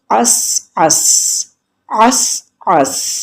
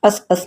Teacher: سین کی آواز کو چلنے دیں گے، اس کو ہم جھٹکے سے روکیں گے نہیں ورنہ وہ قلقلہ ہو جائے گا، اس اس نہیں کریں گے، عس، عس۔ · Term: جزم